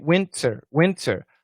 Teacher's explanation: in the word winter, the only aspirated consonant is T